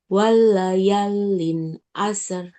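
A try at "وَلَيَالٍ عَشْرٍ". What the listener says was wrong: Walaya, jangan masuk ke lam. Walayalin.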